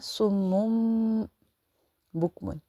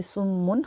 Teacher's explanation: نون ساکن یا نون تنوین کے بعد با آ جائے تو نون یا میم، نون ساکن ہو یا تنوین، ان دونوں کو میم میں کنورٹ کر دیتے ہیں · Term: اقلاب